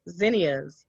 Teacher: The next letter Z is a voiced consonant. Place hand on throat to feel a slight vibration when you make the Z sound.